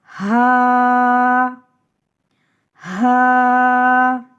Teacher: حلق کے آخر سے جو سینے کی طرف ہے اس جگہ سے ہا کی ادائیگی ہوتی ہے۔ ہا کو سینے کی جانب جو حلق ہے وہاں سے ہا ادا کیا جاتا ہے۔